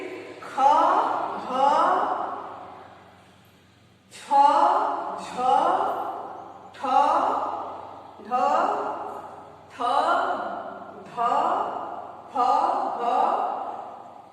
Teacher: वायु हमारे मुख से अधिक मात्रा में निकल रही है। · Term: महाप्राण व्यंजन